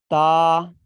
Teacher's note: زبان کی نوک جب ثنایا علیہ کی جڑ سے لگے تو تا ادا ہوتا ہے. نوٹ کر لیں، ثنایا علیہ اوپر کے سامنے کے دو دانتوں کو کہتے ہیں.